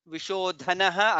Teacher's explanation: Vishodhanaha, again dha is mahaprana.